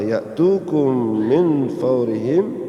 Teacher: sama-sama mim mati yang pertama ketemu dengan mim yang kedua, idgham mimi